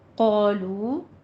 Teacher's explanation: قالو، قافی پر الفی پر لو، جتنا قا کہنا ہے اتنا لو کو بھی واو مدہ ہے کھینچ کے ادا کرنا ہے، قالو نہیں کہنا۔